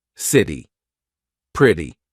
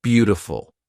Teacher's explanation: this is when T sounds like a very quick D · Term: flap T